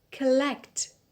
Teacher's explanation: The stress is on the second syllable, it is on lect.